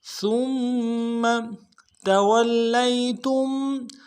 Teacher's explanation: گے، لام کو اگلے لام کو یا کے ساتھ ملانا ہے، یا لین بغیر کھینچے پڑیں گے · ثم سا کو میم کے ساتھ ملانا ہے، سا کو باریک کریں گے، میم کے اوپر تشدید زور دیں گے ، اگلے میم کو نرم سے ادا کریں گے، ثم تولیتم